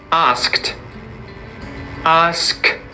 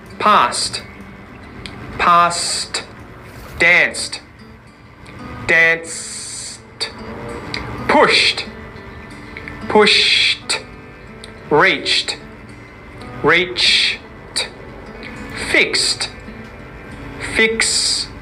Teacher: it's not voiced. No vibrations. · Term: unvoiced consonant t